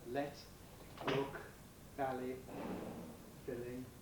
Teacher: clear l which is used before vowels